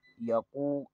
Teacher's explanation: وقف کی صورت میں لوبا دا یا کے اوپر پیش ہے قاف پیش کو واو کے ساتھ ملائیں گے، یہاں پر واو مدہ ہوگا